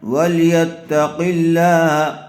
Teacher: قاف کو پر کریں گے اور لفظ اللہ کے لام کو باریک کر کے پڑھیں گے